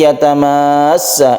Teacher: jadi ini wajib dipanjangkan harus dipanjangkan sampai tiga Alif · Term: mad lazim mutawal